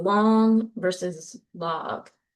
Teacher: You could kind of feel that nasal quality to the vowel in long.